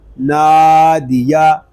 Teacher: دال زیر دی، نادی، یا زبر یا، نادیا، دال اور یا کو ہم کھینچ کر نہیں پڑھیں گے کیونکہ یہاں پر حرکات ہیں اور حرکات کو بغیر کھینچے بغیر جھٹکا دیے معروف پڑھتے ہیں۔